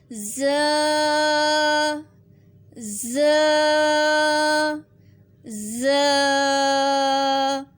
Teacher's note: ز کو تھوڑا سا سیٹی کی آواز بھی آئے گی اور تھوڑا سختی سے پڑھیں گے